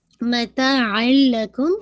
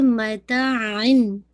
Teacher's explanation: واو نون، لیکن اگر آپ دیکھیں متاعن، آن کی ساؤنڈ ہے، تنوین کی ساؤنڈ کمپلیٹلی مرج ہو گئی ہے لام کے اندر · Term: ادغام